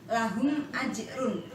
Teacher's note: Di situ ada mim sukun lahum, kemudian berhadapan dengan huruf alif ajrun, maka cara membacanya jelas, mim sukunnya jelas terbaca dan bibir tertutup sempurna. Lahum ajrun, tanpa menimbulkan bunyi dengung maupun samar. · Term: idhar syafawi